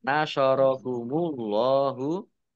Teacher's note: Allahnya dibaca tebal karena harokat di depannya dhammah. Lam fathah berdiri matobi'i panjang 2 harokat.